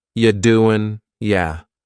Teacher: The word you is reduced to ya.